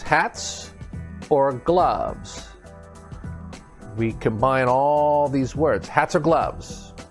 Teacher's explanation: it's a consonant connected to a vowel and we tie everything together that's linking